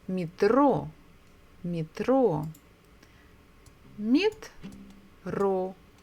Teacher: So we stress the second syllable, metro.